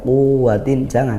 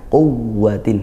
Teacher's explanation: Mana nanti hampir-hampir seperti mad, jangan dibaca panjang, quwwatin, jangan, tapi ditekan, quwwatin, karena wawunya bertasydid, bukan mad seperti itu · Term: waw bertasydid